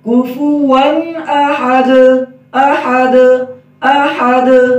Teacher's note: ون کے آخر میں جو نون کی آواز آ رہی ہے یہ صحیح واضح ہو